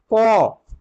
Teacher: সেই কণ্ঠ থেকে অর্থাৎ গলা, সেখান থেকে উচ্চারিত হয় ক। এটা হচ্ছে অঘোষ বর্ণের অল্প প্রাণ, অল্প প্রাণ বর্ণ অঘোষ বর্ণের ভাগের মধ্যে।